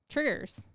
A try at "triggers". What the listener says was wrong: It sounds like Tigger, like Tony the cartoon. You just say it really quick. Like it sounds like an actual trigger.